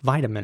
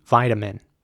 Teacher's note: the beginning would be pronounced like an i so vitamin and the t would be pronounced very soft in my opinion a very soft t vitamin almost like a d